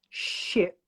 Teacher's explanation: with ship, the tongue is not attached to anything. It's just behind the teeth, not touching the teeth.